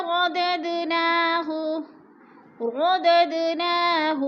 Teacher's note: सुम्मा गददनाहु, गददनाहु, गदद पे क़ुल हो रहा है, दाल पर जज़म है और हरूफ़ क़ुल में से है, इधर हिलाकर पढ़ेंगे दाल को।